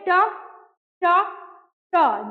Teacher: मूर्धन्य जिसका उच्चारण मूर्धा से हो